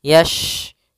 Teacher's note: Hati-hati jangan terbaca dengan huruf sin. Ya, shin makhrajnya adalah tengah lidah kita. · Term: huruf shin